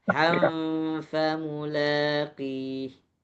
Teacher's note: Jadi bukan han, tapi ham. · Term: ikhfa